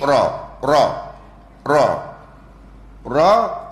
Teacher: ra dia ada jahar sama angin tak boleh keluar